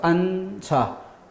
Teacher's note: 니은 지읒 중에 뒤에 초성 자리가 비어있기 때문에 뒤에 있던 지읒이 넘어가서 앉아. 앞말에는 니은 받침으로 발음되고 지읒은 뒤로 이어져 발음됩니다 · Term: 연음